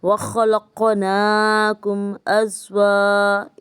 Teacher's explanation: ادھر میم پہ نہیں ٹھہریں گے کیونکہ میم ساکنہ کے بعد حمزہ ہے جو کہ نہ ہی حرف با ہے نہ ہی حرف میم ہے، جو نہ ہی ادغام لیتا ہے اور نہ ہی اخفاء کا غنہ لیتا ہے۔